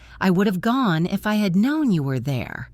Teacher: By building it backwards, you keep the strong stress on the important words like gone and known and there while the little grammatical words get squeezed in between